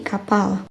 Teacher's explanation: P tanpa hembusan muncul di tengah kata seperti kapal